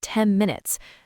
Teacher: the N in 10 will sound more like an M sound, almost like 10 minutes. That's because the lips are already closing for the M in minutes.